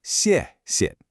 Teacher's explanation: The first xiè is strong with a falling tone. The second one is super light and neutral.